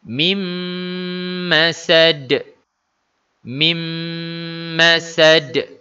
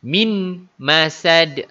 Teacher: Salah sebab dia idgham ma'al gunnah. Nun, bunyi nun dimasukkan ke dalam huruf mim.